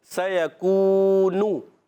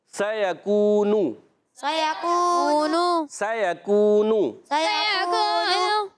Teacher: کاف واو پیش کو، واو مدہ ہے، ایک الف کھینچنا ہے، نون پر پیش ہے، حرکت ہے، اس کو بھی نہیں کھینچیں گے. واو مدہ کو کھینچیں گے پر حرکت کو نہیں کھینچیں گے. اب دیکھیں واو مدہ کو ایک الف کھینچا، سیکونو، جیسے ہی نون پہ آئے نون پیش نو، حرکت نہیں، ہم نے کھینچی نہیں، رک گئے.